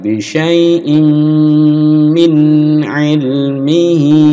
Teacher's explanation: Nah, ini gunah dipanjangkan dengungnya. Gunah mendengung dipanjangkan